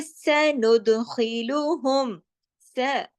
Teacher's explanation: सीन जबर स, देखिए सीटी वाला स